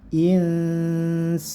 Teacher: Insanu disertai dengung 3 harokat atau 1,5 alif. Baru sanu, sanya cukup diayunkan saja karena ini mad tabi'i, 2 harokat panjangnya atau 1 alif. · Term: ikhfa